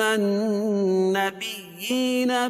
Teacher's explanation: کھڑی زیر قائم مقام یا مدہ کہ اس کو ایک الف کے برابر کھینچ کے پڑھیں گے